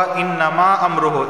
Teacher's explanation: انما، نون پر تشدید غنہ ہوگا